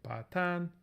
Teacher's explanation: Pa, tan, and what happens is that mid-tone drops out and gets filled in with this default dissimulated tone, which will be low